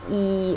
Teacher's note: your tongue is way far forward and way high up